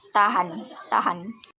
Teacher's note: Bunyi H, ciri-ciri mati, oral, laringan, frikatif